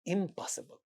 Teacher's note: the negative prefix in this word impossible sounds m because it precedes another labial sound p. So it becomes m, and then we get impossible.